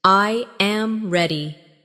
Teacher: The voice falls naturally at the end. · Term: intonation